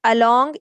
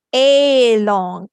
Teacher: A is saying the uh sound because it's saying the schwa sound